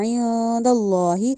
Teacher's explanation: اللہ جو ہے اس کو ہم نے پورا کا پورا موٹا کر کے ادا کرنا ہے